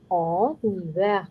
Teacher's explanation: this is silent H, so it would carry forward the sound of last N. The sound of EN is en.